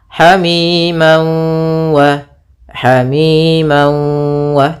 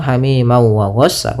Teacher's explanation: Cara membacanya yaitu masukkan tanwinnya ke waw sambil ditahan gunnahnya 2 harakat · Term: idgham bi gunnah